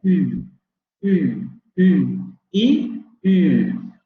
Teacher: Anterior, cerrada, labializada, exactamente. Anterior, cerrada, labializada. Tiene la misma posición que la I. Seguramente ya se los habrán dicho, no solamente que en lugar de distender los labios, hay que redondearlos, ¿no?